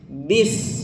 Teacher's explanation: Walaupun sod dan sin itu sama-sama satu makhraj gitu kan, tapi beda dari segi sifat beda. Sod tebal, sin tipis. Maka pengucapannya harus tipis.